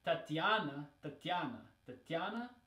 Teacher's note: and so the stress is on the ya, right? This letter, this sound.